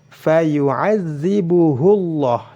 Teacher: Jadi apabila hak kinayah atau hak dhamir yang menunjukkan dia laki-laki didahului oleh huruf yang berharokat dan setelahnya sukun, maka tidak boleh dibaca mad, tidak boleh dibaca panjang, walaupun panjangnya dua harokat tidak boleh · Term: silah